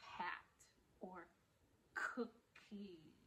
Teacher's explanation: keeping your mouth open and using the back of your tongue to make kind of a coughing sound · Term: hard C or K